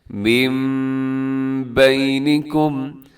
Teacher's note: اور اس طرح دوسری مثال دیکھیے گا، جیسے من بینکم، یہاں نون ساکن ہے اور نون ساکن کے بعد بینکم کے شروع میں با آ رہا ہے، تو یہاں پر بھی اقلاب کا رول لگے گا، ہم نون نہیں پڑھیں گے بلکہ نون کو چینج کر کے ہم میم پڑھیں گے